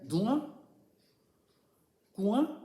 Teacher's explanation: تو یہ کنواں جو بول رہے ہو تو اس میں کچھ ناک کی آواز آ رہی ہے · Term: غنہ کی آواز